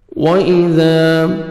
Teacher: واو پہ لپس کو راؤنڈ میں لے کے جائیں گے، الف مدہ، ذال کو نرمی سے ادا کریں گے اور 1 سیکنڈ کھینچیں گے، الف مدہ۔